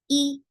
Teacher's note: Hamza is very sharp. Kasra is e sound, but the sound is very short.